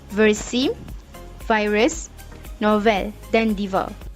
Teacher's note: Cara penghasilannya, gigi atas diletakkan pada bibir bawah dengan tekanan yang mencukupi. Udara yang keluar melalui rongga mulut mengalami geseran disebabkan ada sempitan pada bibir dengan gigi. Lelangit lembut dinaikkan untuk menutup rongga hidung. Pita suara bergetar. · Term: geseran bibir gigi bersuara